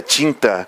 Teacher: Por exemplo, na palavra tinta, você ouve o I, né? A pronúncia do I é nasalizada